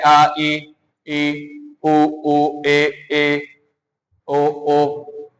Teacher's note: हमारी जीभ क्या है? मुख से किसी भाग से स्पर्श नहीं कर रही है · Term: स्वर